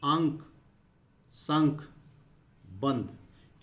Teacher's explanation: अंक संख बंद इन का उच्चारण करते हुए जो ध्वनि है वह झटके के साथ निकल रही है और नाक से निकल रही है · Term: अनुस्वार